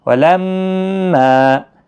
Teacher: میم مشدد پر گنہ الف مدہ کے ساتھ